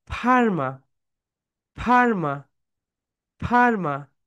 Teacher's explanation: উপরের দাঁত নিচের ঠোঁটের সঙ্গে হালকা টাচ করো।